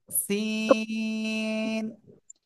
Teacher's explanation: জিহ্বার আগা সামনের নিচের দুই দাঁতের পেট ও আগার সাথে লাগিয়ে চিকুন আওয়াজে উচ্চারণ করব